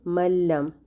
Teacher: اس میں غنہ نہیں ہو رہا، اور کیونکہ نون کی کوئی بھی صفت باقی نہیں بچی تو یہ ادغام کامل ہے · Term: ادغام کامل بلا غنہ